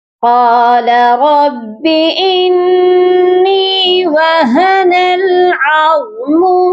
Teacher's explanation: قاف کو موٹا کریں گے، را کو بھی موٹا پڑھیں گے، اور انی یہاں پر دیکھیے نون کے اوپر تشدید ہے، نون مشدد ہے، یہاں ہم غنہ کریں گے۔